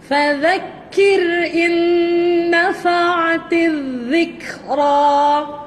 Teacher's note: ذال hujung lidah keluar di antara gigi atas dan bawah. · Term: حرف ذال